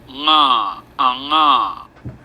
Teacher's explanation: That's called a voiced uvular nasal, and it's pronounced like this.